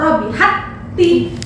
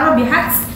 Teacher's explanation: Atau seandainya jim ketemu jim atau ja ketemu ja, nah, itu tidak boleh mantul, langsung diidghamkan, dimasukkan ke huruf yang kedua. Cara membacanya langsung masuk ke huruf yang kedua tanpa memantulkan atau menghameskan huruf sukunnya. Nah, itu idgham mutamatsilain.